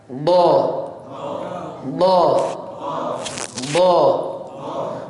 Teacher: Dia huruf yang satu-satunya harus ditekan. Tepi lidah ya, tepi lidah bertemu dengan gigi geraham atas. Ditempel dua-duanya. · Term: huruf dot